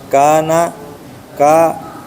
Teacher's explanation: mad thobi'i panjang dua harakat